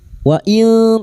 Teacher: nun sukun bertemu ta ikfa hakiki kita samarkan bunyi nun sukun dan mendengung selama 3 harakat